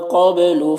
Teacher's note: قاف حروف مستعلیہ میں سے پر پڑھیں گے، با میں قلقلہ ہو رہا ہے